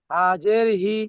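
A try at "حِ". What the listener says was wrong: বড় হা এটা। হাটা একটু গলার ভিতর দিয়ে উচ্চারণ করেন। হাজের হি।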